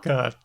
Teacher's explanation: There's an unreleased T at the end.